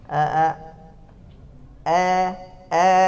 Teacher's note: bercampurnya antara fathah dengan kasrah